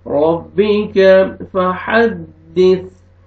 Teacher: पढ़ेंगे, काफ को बारीक करके पढ़ेंगे, रब्बिक फहद्दिस, हा पढ़ेंगे और लास्ट में सीन नहीं सा है, सीन में आपका आवाज मिक्स नहीं होना चाहिए। · रॉ के ऊपर ज़बर है, रॉ को मोटा करके पढ़ेंगे, काफ को बारीक करके पढ़ेंगे , रब्बिक फहद्दिस, हा पढ़ेंगे और लास्ट में सीन नहीं सा